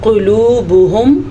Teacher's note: جمیعا وقلوبہم، یہاں پہ ادغام بالغنہ کا قاعدہ ہو رہا ہے تو ہم ادغام بالغنہ کریں گے. قلوبہم قاف کو پر کر کے پڑھیں گے اور ہا کو چھاتی سے نکالیں گے